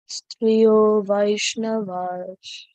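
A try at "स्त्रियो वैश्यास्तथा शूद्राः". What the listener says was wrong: Not Vaishnava, Vaishya. Not Vaishnava, Vaishya.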